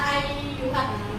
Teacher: Jadi panjangnya 4 harkat sampai 5 harkat. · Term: mat jaiz